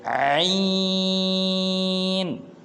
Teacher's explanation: جو عین ہے یہ حلق کے درمیان سے ادا ہوتا ہے